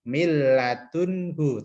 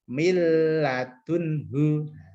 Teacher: Idgham bila gunnah ini masuk tapi tidak dengung. Bila gunnah itu tidak dengung.